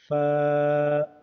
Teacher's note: गैन का मखरज हलक के मुंह के जानब वाले हिस्से से गैन अदा होते हैं, जैसे गैन। फा का मखरज नीचे के होंठ के तर वाले हिस्से पर ऊपर के दो दांत के किनारे को लगाने से फा अदा होते हैं